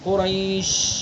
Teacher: جب قریش کے شین کو ہم پڑھ رہے ہیں تو آواز بند نہیں ہو رہی ہے احد کی طرح بلکہ جاری ہو رہی ہے قریش. ٹھیک ہے، تو یہ ہے رخوا.